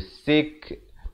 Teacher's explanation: Dan kaf bila mati kena ada bunyi hamas, bunyi angin tu. Sik. Kalau kita pilih untuk waqaf di situ.